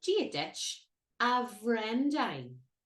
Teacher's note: So the BH has a W sound here. Between W and V, dependent upon your own accent.